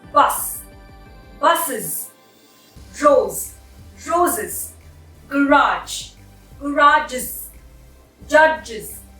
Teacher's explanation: There is an additional I syllable added into the word. These words are common when the ending of the word is S, Z, J, Ch, Sh.